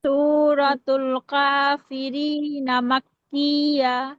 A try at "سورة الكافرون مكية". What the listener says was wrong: আচ্ছা তো কাফিরিনা হবে না কাফিরুনা হবে রতে পেশ হবে সূরাতুল কাফিরুন মাক্কিয়া সূরাতুল কাফিরুন মাক্কিয়া